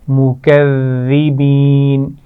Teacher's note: اور اس میں زال آ رہی ہے، اس پر شد ہے تو اس کا خیال رکھنا ہے کہ اس میں سیٹی کی آواز نہیں آنی چاہیے